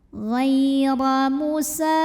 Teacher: Huruf ra dibunyikan secara tafkhim karena barisnya di atas. Maka cara bacanya tebal, pangkal lidah kita angkat.